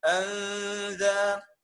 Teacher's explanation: نخفي النون عشان خاطر النون ساكنة ورا حرف الذال · أنذر الراء ساكنة مفخمة، طب ليه مفخمة؟ عشان ساكنة بعد الفتح · نخلي الذال حرف لثوي